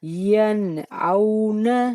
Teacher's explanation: حمزہ، ہا، عین، ہا، گین، کھا میں سے کوئی حرف آ جائے تو نون ساکن اور تنوین کو گنہ کے بغیر پڑھتے ہیں